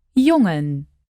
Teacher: It's basically just an N that you make with the back of your tongue instead of the front.